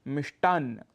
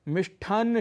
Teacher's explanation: मिष्टन में जो ट है उसको हम ठ बोल देते हैं ट अल्पप्राण है क्योंकि ट वर्ग का पहला वर्ण है और